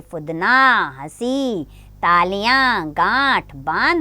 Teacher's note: जहाँ चंद्र बिंदु आता है वहाँ पर नाक और गले की ध्वनि आती है